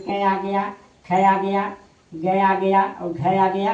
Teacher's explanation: क वर्ग जो होता है वो कंठ से बोला जाता है।